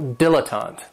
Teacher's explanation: this word has three syllables, and there's kind of like a stress on that first and last syllable